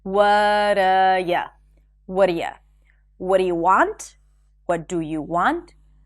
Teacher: The phrase, what are you, and what do you sound exactly the same.